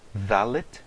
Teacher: Note aqui que quando eu pronunciei o dalet sem o dagesh, eu não pronunciei com o som de D, como no hebraico moderno, mas o som de the